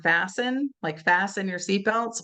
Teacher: we don't really hear the t